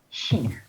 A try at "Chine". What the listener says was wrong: Non, CH, ça fait ch.